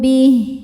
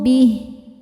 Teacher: Ha ini walaupun barisnya panjang jadi sukun saja. Kemudian bnya tetap pendek bih. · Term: mad silah qasirah